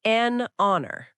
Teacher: It's not just about the letter, it's about the sound. So, even though honor starts with H, it has a vowel sound.